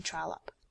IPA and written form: ˈtrɒləp (Trollope)